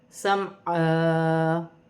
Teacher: ان دونوں کو ایک ایک الف کی مقدار کھینچ کر پڑھا جائے گا انہیں۔ وقف کی صورت میں 2 زبر کی تنوین ایک الف مدہ میں بدل جائے گی